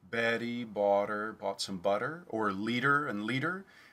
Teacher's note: for many people they experience it more as a t or a d between two vowels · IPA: ɾ